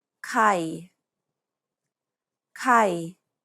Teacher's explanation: it's pronounced low and steady pronounce it lower than you would your regular pitch the idea is to pronounce it low and keep it low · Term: low tone